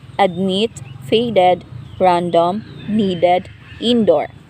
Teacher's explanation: voiced alveolar stop initial